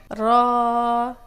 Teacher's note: जबान की पुष्ट वाला किनारा और ऊपर वाले दांतों के मसूड़े